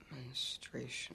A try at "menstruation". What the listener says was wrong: You're saying it like you're scared. Don't say it like you're scared. Say it like it's normal.